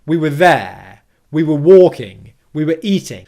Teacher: each of those verbs after the word were was stressed and were itself was unstressed · unless I'm intentionally stressing the word were, I'm going to use it in its weak form. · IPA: /wə/